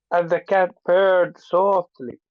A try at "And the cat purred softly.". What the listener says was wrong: Okay, but let's make cat a little bit longer.